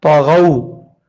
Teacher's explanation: الذین طغوا، تو زبر تو، غین واو زبر غو، تو بھی موٹا ہے غین بھی موٹا ہے